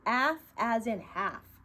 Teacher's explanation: we don't hear the sound of the L we're going to say AF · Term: silent